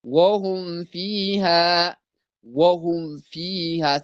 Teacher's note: ዋውና ፋ ከንፈር ላይ ስለሆነ ወደ ኢኽፋ እንዳይሄዱብን ነው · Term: ኢዝሃረን ሸፈውየን